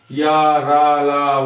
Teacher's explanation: हल्की आवाज आ रही है, हल्की हवा निकल रही है, तो यह हो जाएंगे अल्प प्राण